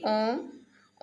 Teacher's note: जैसे कि ओम, ओम में जो ओ उच्चारण करते हैं तो ओम में जो लास्ट में ओ की मात्रा है वो लंबी खींचने से हम प्लुत हो जाता है, तो प्लुत के लिए हमें यहाँ पे चिन्ह लगाए, तो ये प्लुत स्वर है।